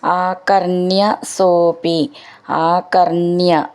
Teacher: ണ എന്ന് ഡബിൾ ആയിട്ടുണ്ട് അപ്പൊ മെല്ലെന്ന് ഊന്നി പറയണം